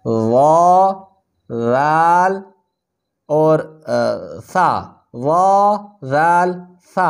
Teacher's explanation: ظا ذال ثا، یہ زبان کا سرا اور اوپر کے دانتوں کے اندرونی کناروں سے ادا ہوتی ہیں۔ زبان کا سرا اوپر کے اس ثنایا علیہ، اس ہمنے کے دو دانتوں کے اوپر کا اندرونی حصہ، یہاں پر زبان کا سرا لگتا ہے تو وا ذال اور ثا، وا ذال ثا ادا ہوتے ہیں۔